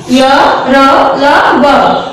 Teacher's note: अंतस्थ व्यंजन है जिन व्यंजनों का उच्चारण स्वरों एवं व्यंजनों के मध्य यानी बीच में होता है उन्हें अंतस्थ व्यंजन कहते हैं, यानी स्वर और व्यंजन के बीच से जब कोई हवा द्वारा निकाला जाता है तो इनको हम अंतस्थ व्यंजन कहते हैं।